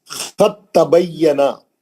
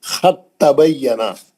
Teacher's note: اب دال نہیں پڑھیں گے، سیدھا تا میں چلے جائیں گے آپ. خط تبینا، کیونکہ دال اور تا کا مخرج ایک ہی ہے. · دال اور تا کا مخرج ایک ہی ہے. دال جو ہے تا کے اندر ادغام کر لے گی.